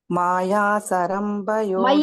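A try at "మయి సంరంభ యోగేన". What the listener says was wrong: మాతాజీ మాయ కాదు మై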